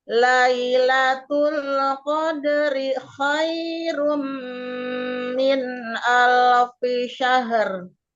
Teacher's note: Jangan dipanjangkan dirinya, Bun. Satu harakat saja untuk panjangnya.